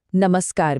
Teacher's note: इसे दंत्य स कहते हैं क्योंकि इसे बोलते वक्त जीभ दांतों को छूती है।